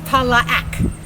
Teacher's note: back then it was three syllables, Ta-la-ac. It's a guttural sound